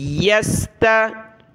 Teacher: باریک تا ہے پھر بڑی طا ہے، موٹا کریں گے اس کو